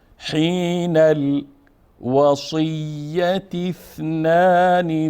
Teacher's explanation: حین حرکت آخر نون هم با لام میچسبونیم، پس الف نطق نمیشه. وصیت اثنان حرکت آخر ت مربوطه هم به حرف ث یا ثا به تعبیر عربی میچسبونیم و الف نطق نمیکنیم